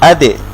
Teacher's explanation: দালের উপরে যদি সাকিন হয়, দালের সাউন্ডটাও ফেরত আসবে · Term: কলকলা